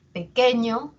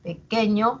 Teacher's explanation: a sonar más pequeño la e va a ser más intensa pequeño la e va a tener un tono más alto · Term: tónicas, sílaba tónica